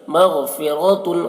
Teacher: را کو پر پڑھیں گے، را کے اوپر زبر ہے